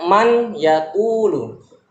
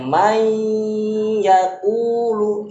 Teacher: menggabungkan huruf yang pertama ke huruf yang kedua sehingga menjadi satu huruf yang bertasydid · Kalau tidak idgham dia dibaca man yaqulu. Tapi karena diidgham, huruf nunnya melebur ke huruf ya. May, bergabung dia pengucapannya may yaqulu, itu yang dimaksud dengan idgham. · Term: Idgham Bighunnah, idgham bi gunnah